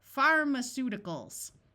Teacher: Notice the A takes on the muffled schwa sound